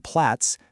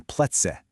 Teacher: That's called an umlaut, and it actually changes how the vowel sounds. The A sound in Platz becomes more of an E sound in PlätzE.